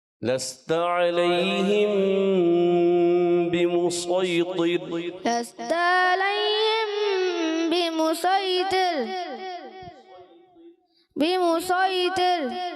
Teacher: صوت کو موٹا رکھنا ہے، طو بھی موٹا رکھنا ہے، را باریک کرنا ہے۔